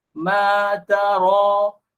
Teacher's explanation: Ta nipis, ra tebal kerana ra ini berbaris fathah.